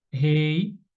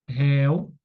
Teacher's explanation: Rei não vai receber, porque é fechado. Réu recebe porque é aberto.